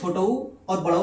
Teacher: छोटऊ और बड़ऊ जो होता है ओष्ठ स्वर होते हैं।